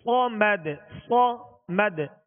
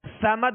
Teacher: صاد کو سیٹی کی آواز میں سختی سے ادا کریں گے اور پر پڑھیں گے، باریک نہیں پڑھیں گے